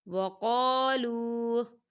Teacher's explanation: واؤ ساکن ہے، واؤ ساکن سے پہلے پیش ہے تو یہاں واؤ مدہ ہو رہا ہے، اسے دو حرکت کے برابر کھینچ کے پڑھا جائے گا